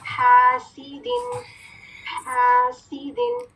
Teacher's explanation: وسط الحلق، وسط کیا ہے؟ درمیان. کہاں کا درمیان؟ حلق کا درمیانی حصہ، سینٹر آف دا تھروٹ · اس میں سیٹھی کی کوالٹی ہے، سفیر کی کوالٹی ہے